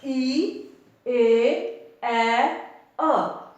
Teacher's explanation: ਕਿਵੇਂ ਸਾਡਾ ਮੂੰਹ ਹੈ ਜਿਹੜਾ ਉਹ ਇਹਨਾਂ ਧੁਨੀਆਂ ਦੇ ਉਚਾਰਨ ਦੇ ਸਮੇਂ ਥੋੜੇ ਤੋਂ ਜ਼ਿਆਦਾ ਖੁੱਲ ਰਿਹਾ ਹੈ।